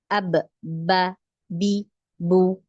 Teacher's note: bibir ini contoh Ini bibir atas dan Ini bibir bawah nah saat dia menyentuh bibir atas dan bibir bawah ini keluarlah huruf ba